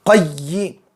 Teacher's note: یہاں پر تشدید ہے، یا کو ایک مرتبہ قاف سے ملائیں گے، ایک مرتبہ خود سے پڑھیں گے